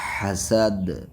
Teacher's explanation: دال پہ بھی قلقلہ ہوگا